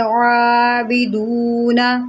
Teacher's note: سب سے پہلے یہاں پر غور کریں، یہاں پر یہ مد آپ کو نظر آ رہی ہے، اس کو ہم نے کھینچ کے پڑھنا ہے، وَلَا أَنْتُمْ عَابِدُونَ، عین ہے اس کے اوپر کھڑا زبر ہے، عین کو اس کے مخرج سے ادا کریں، حلق کے درمیان سے ادا کریں